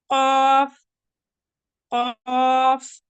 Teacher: जबान की जड़ और कवे के बिल मुकाबिल तालु से